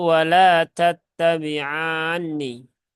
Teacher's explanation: ketika ada mat bertemu dengan huruf yang bertasydid maka dia dibaca panjang 6 harokat.